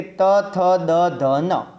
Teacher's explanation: હવે દંત્ય વર્ણોની વાત કરવી છે તો જે વર્ણોનું ઉચ્ચારણ કરવા માટે જીભ વડે ઉપલા દાંતોનો સ્પર્શ કરવો પડે તેને આપણે દંત્ય વર્ણો કહીએ છીએ